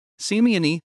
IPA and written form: ɕeˈmjɔnɨ (Siemiony)